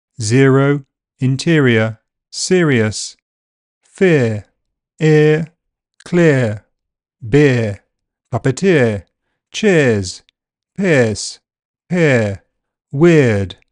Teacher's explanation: a long vowel sound made with the tongue near front, the jaw near close and the lips unrounded. It is generally pronounced in this monofongal way these days without the movement to the center. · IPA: /ɪə/